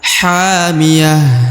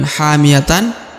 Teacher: hamiah bukan hamiyatan atau tapi dibaca hamiah berubah menjadi ha ya karena dia berada di ujung ayat dan dihentikan bacaan sehingga dia disukunkan ya berubah menjadi huruf ha